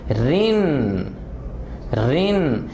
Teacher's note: را کو بولتے ہوئے جو آواز کے اندر وائبریشن ہے, کپ کپاہٹ ہے